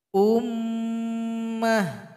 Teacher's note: ada Meme yang bertasydid maka didengungkan